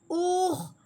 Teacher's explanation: ہاں جی، اس کے بعد بھی حمزہ والی نکلے گی، اور خو کو ہم نے رگڑ کے اس لیے نکالا ہے، خو حلق کی درمیانی حصے سے نکلتا ہے اور رگڑنے والی آواز سے نکلتا ہے